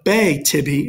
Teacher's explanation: pretending the H isn't there the bay Tibby is your dactyl Bae is long tibia is short